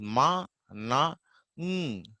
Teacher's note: these nasal sounds are produced by releasing air through nasal cavity, not through mouth